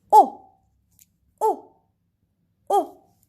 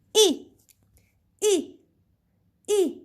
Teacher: The fourth tone we will go from up to down.